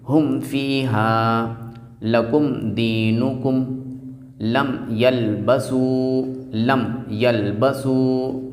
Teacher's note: میم ساکن کے بعد نہ تو میم ہے اور نہ ہی با ہے، تو اس لیے اس کے میم کو خوب اچھے انداز سے ظاہر کر دیں گے